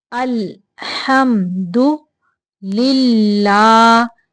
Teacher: अल्हम्दु लिल्लाह, यहाँ पे अल्लाह का लाम बारीक पढ़ेंगे क्योंकि अल्लाह के लाम के पिछले हरफ के नीचे ज़ेर है